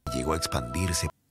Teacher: Ok, en este caso hemos omitido una palabra entera. La O y la E han formado el diptongo OE y la palabra A simplemente no está ahí.